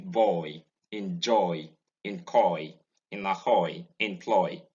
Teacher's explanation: It's a mid-back closing diphthong. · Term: the diphthong oi